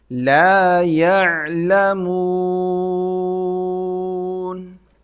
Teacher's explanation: جب یہاں پر سٹاپ کریں گے تو سیکنڈ لاسٹ نمبر پر واو ہے تو اس پر مد کی جائے گی. یاد رکھیں جہاں پر بھی آپ ٹھہریں، سٹاپ کریں، وقف کریں، تو سیکنڈ لاسٹ نمبر پر اگر واو یا الف کھڑی زبر کھڑی زیر یا الٹا پیش ہو تو اس کو کھینچا جاتا ہے اور اس پر مد کریں.